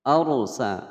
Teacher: ada ra sukun sebelumnya fathah dibaca tebal.